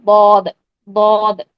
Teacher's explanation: दद वाहिद एक ऐसा हर्फ है जो जुबान की करवट यानी मोटे किनारों से अदा होता है इसीलिए इसे मखर के तबार से हा फिया कहते हैं यानी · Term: हाफ लिसान